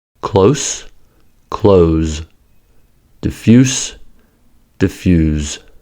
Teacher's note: the adjective and verb form have the same spelling but differ in voicing. From s to z.